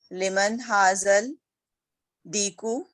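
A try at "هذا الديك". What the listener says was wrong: हाज़त दीकू, हाज़त दीकू शमसी है ना दाल, हाज़त दीकू तशदीद आएगी, ठीक है। यहाँ पे कमरी था, हाज़ल कुर्सी, इसलिए तशदीद नहीं आई काफ पे।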